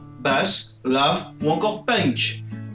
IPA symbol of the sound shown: ʌ